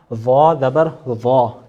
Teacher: ضا کی ادائیگی ہم نے صحیح کرنی ہے اور اسے پر یعنی موٹا کر کے پڑھنا ہے